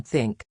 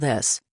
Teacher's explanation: One of the trickiest is the th sound. There's a difference between think, with the soft th, and this, with the voiced th